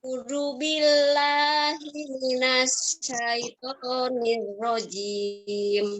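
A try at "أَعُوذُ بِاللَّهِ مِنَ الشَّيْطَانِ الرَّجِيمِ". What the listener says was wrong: Ya, minasnya itu syahnya tebal ya. Minasya. Minasya. Ya, a'udzu, zu-nya digigit lidahnya. Oke, syahnya jangan lupa syahnya tebal.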